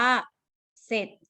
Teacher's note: ออกเสียงแค่สอเสือนะคะแต่จะไม่ออกเสียงตัวรอเรือ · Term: คำควบไม่แท้